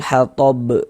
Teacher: Karena berwakaf di huruf yang tidak dibaca panjang tadi itu. Nah, huruf ba ini kan menjadi sukun jadi dia mantul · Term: qalqalah kubra